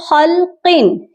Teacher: یہاں پر دیکھیں خلقن، یہاں میں نے غنہ نہیں کیا، تنوین تھی لیکن میں نے غنہ نہیں کیا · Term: اظہار